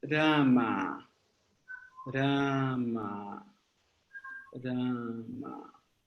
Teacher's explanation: Como aqui nessa palavra, por exemplo, a gente tem um R com um cana, um M com um cana. Então, temos duas vogais longas. A tonicidade está na primeira vogal. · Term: sílaba tônica